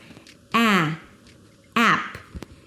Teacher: it's the a as in cat so you got to open your mouth push your tongue forward and pull your lips to the side